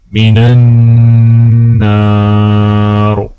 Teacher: اجرنا من النار، نون کے اوپر غنہ کریں گے